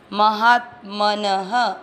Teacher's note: म में अ मिक्स करेंगे, म हा के साथ आधा त, महात, म न दोनों अक्षर पूरे, दोनों में अ मिक्स करेंगे, महात मन, न में अ की मात्रा तो विसर्ग को पढ़ेंगे ह,